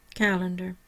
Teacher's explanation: in your syllable division um so I have Cal and dar my primary stress is on the Cal the first syllable no secondary stress the middle syllable is schah and the final syllable because it's our control will bewah remember